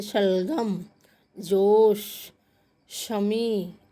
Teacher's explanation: श है जो बच्चे, ये तालव्य है। तालव्य हमारा तालु जहाँ है वहाँ पर जीभ टकराती है